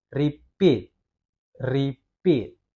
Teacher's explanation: Dia lebih ditekankan pit-nya dibanding dengan R-nya. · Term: word stress